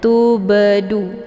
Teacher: Cara bacanya huruf banya dipantulkan dengan pantulan ringan. Tubu kedengaran suara bunyi be. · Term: qalqalah sugra